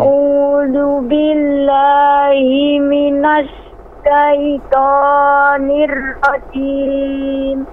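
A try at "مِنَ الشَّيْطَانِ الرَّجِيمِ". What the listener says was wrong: Nir-rajim. Nir, jangan terlalu banyak getaran ro-nya. Nir salah. Nah, itu banyak. Nir-rajim, nir-rajim.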